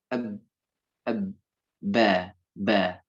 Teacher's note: Syafatain. Persentuhan antara kedua bibir